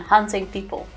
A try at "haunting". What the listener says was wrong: Also, haunting people, haunting, not hunting people. You said haunt. Hunting. haunting.